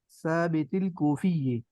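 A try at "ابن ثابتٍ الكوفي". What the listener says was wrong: ثابتین، یہ تین ہوگا نا، تین تو آگے جب ملائیں گے تو اسی ثابتین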